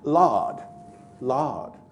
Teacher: he puts the vowel right down at the bottom back of the cardinal Val diagram in other words Lord Lord the